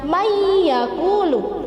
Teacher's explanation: bacaan main yaqulu jadi tulisannya Madya puluh tetapi membacanya Mia puluh Jadi dimasukkan ke huruf ya' dan mendengung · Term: idgham